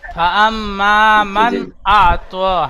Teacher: পরে হামজা এসেছে, খেয়াল করতে হবে। নুন আচ্ছা সাকিনের পরে হরফে হালকি 6টি অক্ষরের মধ্যে হামজা এসেছে, নুন সাকিন বিনা গুন্না পড়তে হবে